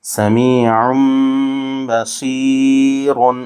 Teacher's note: اگر وقف کریں گے تو یہ را باریک ہو جائے گی، اگر نہیں رکیں گے تو را پر ہوگی.